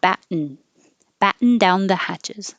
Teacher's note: the tongue goes to the T, bat, and then you just make a n noise.